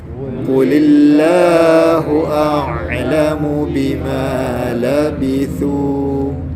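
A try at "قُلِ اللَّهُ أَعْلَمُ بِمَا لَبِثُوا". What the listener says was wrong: A'lamu, ain mati juga kena cukupkan masa dia.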